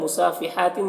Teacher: सीन और हा दोनों में खड़ा ज़बर है, एक अलिफ के बराबर खींच कर पढ़ेंगे